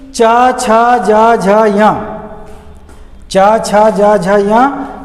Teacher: ये तालु में जीभ चली जाती है।